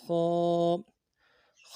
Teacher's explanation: یا زبریہ، خا الف زبر خا. خا کو موٹا ادا کرنا ہے، موٹا حرف ہے. موٹا کرنے کے لیے زبان کا بیچ بھی اوپر تالو کی طرف اٹھائیں گے. الف مدہ ایک الف دال میں کھینچیں گے.